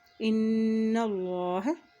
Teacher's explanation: یہاں نون کے اوپر شد ہے یہاں پہ غنہ ادا کریں گے اور اللہ کے نام سے پہلے زبر ہے تو اللہ کا نام یہاں پر موٹا ادا کریں گے